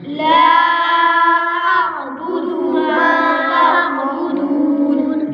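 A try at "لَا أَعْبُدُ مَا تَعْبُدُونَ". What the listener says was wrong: دال کو آپ کھینچ رہے ہیں، اس کو نہیں کھینچنا۔ لا اعبد ما تعبدون۔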